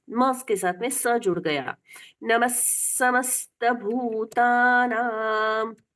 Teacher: ये विसर्ग का उच्चारण स मानकर पढ़ना चाहिए